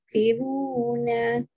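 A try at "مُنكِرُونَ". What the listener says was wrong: Lagi sekali, naikkan sikit lagi lidah tu. Mungkiruna.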